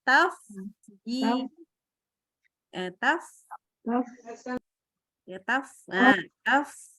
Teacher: Jadi yang kena itu gigi ketemu bibir bawah.